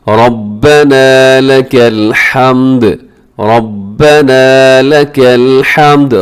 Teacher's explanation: ربنا میں را موٹا ہے، آخر میں تھوڑا لمبا کیجیے گا کیونکہ الف ہے اس کے ساتھ